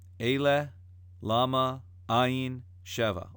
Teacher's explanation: All small syllable words that are accented at the first syllable.